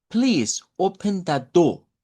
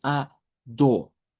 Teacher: El acento británico elimina esas eres.